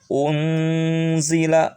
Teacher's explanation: harus disamarkan Nun nya antara n dan Ang